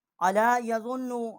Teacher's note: ضاد کو ہم نے نون کے ساتھ جو ہے وہ مشدد کیا ہے، اس کے اوپر غنہ ہم نے نہیں کیا